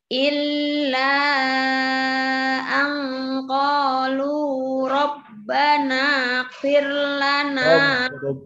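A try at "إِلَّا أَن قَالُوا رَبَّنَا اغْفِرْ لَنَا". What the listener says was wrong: Gain perjelas Bu. Rabbana.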